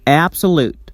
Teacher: It is tensed and pronounced louder and longer. For example, absolute. The stress is on the first syllable. Ab. It's tensed and pronounced louder. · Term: primary stress